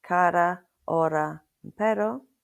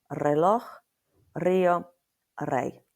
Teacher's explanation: So we've got the soft R within a word, like cara, hora, and pero, or at the beginning of a word, you have a rolled R, reloj, rio, rey, and that's the letter R.